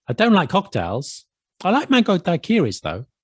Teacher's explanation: you say the negative sentence then you show contrast and then you put though at the end with like a rising tone